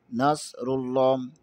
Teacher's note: صاد کو موٹا پڑھیں گے، صاد اور سین میں فرق کریں گے۔